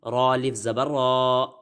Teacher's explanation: آگے صاد زیر سی، را الف زبر را. اب را کو پر پڑھا، وجہ آپ کو پتہ لگی ہے کہ را پر زبر آ گیا. سرا طا زبر طا، صراطا.